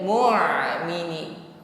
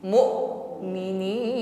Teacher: sukun ditekan dan sifatnya syiddah jadi tertahan aliran suaranya